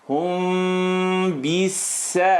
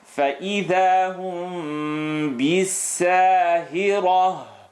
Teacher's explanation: When mim sukoon is followed by ba, the lips vibrate.